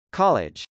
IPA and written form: kˈɑlɪdʒ (college)